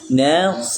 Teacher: sa bukan sh bukan sh tapi sa ya maka terbaca nas bukan nas harus nas tapi kita hati-hati juga nunnya jangan saya terbawa nos